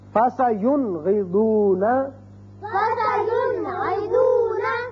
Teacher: نون ساکن کو ہم نے ظاہر کر کے پڑھا